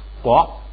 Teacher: 卡本来是送气的，前边一加前加字改成不送气，改成嘎，就成了国